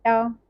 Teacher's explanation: टा में जो तालु के आगे वाला भाग मूर्धा कहलाता है, जैसे उसका यूज हो रहा है, तो यहाँ पे मूर्धा उच्चारण स्थान हो जाएगा टा वर्ण का।